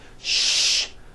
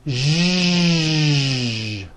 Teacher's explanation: To produce this sound, first make a sh sound, and then you add voicing. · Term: voiced SH sound